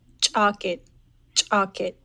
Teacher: you might have heard that harsh CH sound so it's a ejective CH in that one